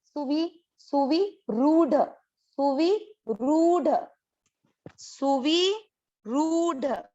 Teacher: वी की मात्रा छोटी है, तो इसको दीर्घ ना करें, और ये जो रू की मात्रा है ये है बड़ी, र की मात्रा, तो ये वाली मात्रा को अपने को दीर्घ करना है।